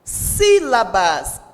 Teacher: Sílabas, a sílaba tônica é o si, também está acentuada